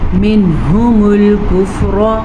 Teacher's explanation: منہم الکفر، نون ساکن کے بعد حروف ہلکی میں سے ہا ہے تو نون ساکن کو ہم ظاہر کر کے پڑھیں گے، بغیر غننے کے پڑھیں گے.